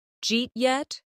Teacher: In casual speech, it often sounds like Jeet yet, the words blend together so much that a learner might think it is a completely different phrase. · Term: blended speech